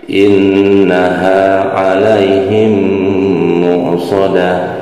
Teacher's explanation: Ini ada nun bertasydid yaitu gunah ya, gunah musyaddadah. Jadi harus didengungkan dua, sebanyak dua harokat ya. Innaha fathah ketemu huruf alif.